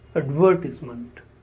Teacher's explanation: Advertise is a verb and the noun form is advertisement. The stress is on the sound v.